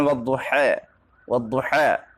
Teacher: فتحہ کو کسرے کی طرف مائل کرنا امالہ صغریٰ ہے۔ مثلا والضحی، والضحی گویا ہم نے کسرے کی طرف تھوڑا مائل کر دیا، تو رائے ممالہ باریک پڑھی جائے گی۔